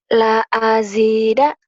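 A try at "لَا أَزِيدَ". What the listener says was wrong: la azida, kan J-nya panjang, Neng.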